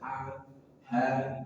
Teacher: Ha bukan dari dada. Ha ini berat dari pangkal tenggorokan tidak ada makhraj huruf dari dada tapi dari pangkal tenggorokan